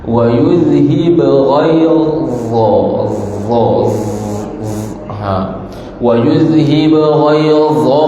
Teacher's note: Jadi dha ini hujung lidah berada di antara dua gigi.